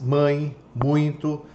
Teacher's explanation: Já os nasais, mãe, muito, já saem pelo nariz